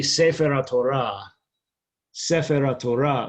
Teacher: So the accent would be on the Ra part, and you would just string it together.